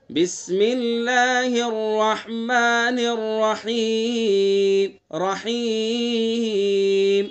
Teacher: رحیم جو یہ حرف مدہ ہے، یہاں پر ہم جو وقف کر رہے ہیں یہاں آواز کو لہرائیں گے